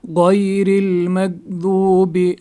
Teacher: را باریک پڑھی جائے گی کیونکہ اس پہ اس کے نیچے زیر ہے